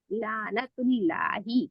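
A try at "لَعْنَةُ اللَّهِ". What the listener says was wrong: अब फिर भी निकला है, क्योंकि ये ना इसको झटका दे के हमजा बना देना है, और ना इसको कुछ और पढ़ना है, ठीक है।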